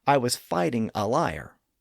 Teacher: Instead of saying I was lighting a fire, I might say I was fighting a liar. So the initial sounds of lighting and fire are reversed, thereby creating fighting and liar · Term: spoonerism